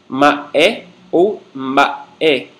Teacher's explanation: Nesse caso, ele é realmente oclusivo, ele fecha totalmente a passagem do ar, devendo-se encostar os lábios para pronunciá-lo. MB é uma consoante nasal oralizada ou nasal com distensão oral. Começa nasal M e termina oral B.